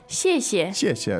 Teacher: the first part is fourth tone, the second part is neutral